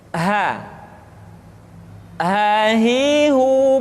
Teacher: dikeluarkan dari tenggorokan yang terjauh